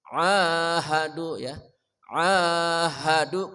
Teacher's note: ain tengah kerongkongan namanya wastol halqi